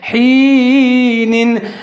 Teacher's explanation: ہا کے نیچے زیر ہے، یا ساکن ہے، یا لین ہے، یا کو ہا کے ساتھ ملا کے پڑھیں گے اور تھوڑا سا لمبا پڑھیں گے